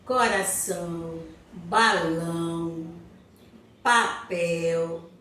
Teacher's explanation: eu pronuncio a última sílaba com maior intensidade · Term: sílaba tônica